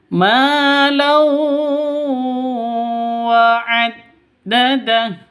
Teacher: Tanwin bertemu dengan wawu, cara bacanya masuk ke wawu disertai dengung karena bacaan idgham bi gunnah. Idgham masuk bi gunnah dengan dengung.